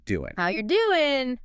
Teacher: The ing sound at the end of doing, that sound you make at the back of your throat, is often shortened to just an in sound. So doing becomes doing.